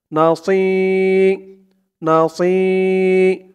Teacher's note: হবে একেবারে সি বলা যাবে না সি বললে কিন্তু সিনের উচ্চারণ হয়ে যাবে বলতে হবে মুখটা একটু গোল ভরপুর থাকবে